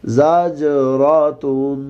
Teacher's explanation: زا میں سیٹی کی آواز آئے گی، جیم کو قلقلہ کریں گے، را کو موٹا کریں گے۔